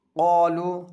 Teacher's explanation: قاف کے ساتھ ہی ساتھ الف بھی پر ہو جائے گا